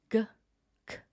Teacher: This one represents the velar sound, which is g or k. Notice when you make that sound, the back of your tongue presses up against the roof of your mouth. G, k. The letter is meant to look like a tongue pressing upward.